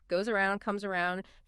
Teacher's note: Feel that Z's vibration in your throat linking the words. · But the Z sound is voiced z, meaning your vocal cords do vibrate. When a voiceless S is followed by a voiced sound like a vowel, it often becomes voiced itself, turning into that Z.